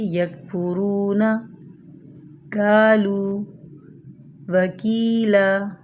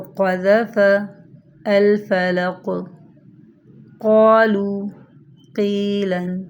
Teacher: کاف کی آواز باریک اور بغیر جھٹکے والی ہوتی ہے، اور قاف کی آواز موٹی ہوتی ہے، اور جب قاف کے اوپر جزم آئے تو جھٹکے والی ہوتی ہے، جیسے کہ مثال دیکھیے یکفرون، قالو، وکیلا۔